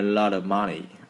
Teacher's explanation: âm t khi mà đứng giữa hai cái nguyên âm thì nó sẽ biến thành một âm D trong anh Mỹ